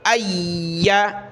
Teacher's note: حمزہ کو یا کے ساتھ ملائیں گے، یا کو سخت کرنا ہے۔